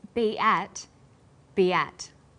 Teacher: Stapleton says be at, be at. Be ends with the vowel sound e, and at begins with vowel a. Linking these words together with the y sound, we have be at.